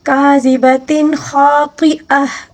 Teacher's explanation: خا کو بھی پر پڑھیں گے، طا کو بھی پر پڑھیں گے اور گولتا کو گولہا کے ساتھ تبدیل کر کے پڑھیں گے.